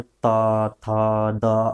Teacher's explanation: दंत्य, जो दांतों का बिल्कुल स्पर्श करता है, जैसे त, थ, द, अपनी जीभ दांत को स्पर्श करती है, इस जो है त, थ, द, ध और न, इसका उच्चारण में।